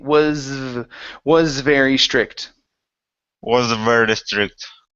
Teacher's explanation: So connect the S into the V.